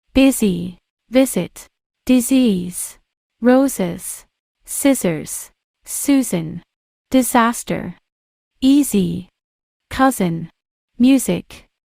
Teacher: Another situation when the letter S takes the Z. sound is when it comes between two vowel sounds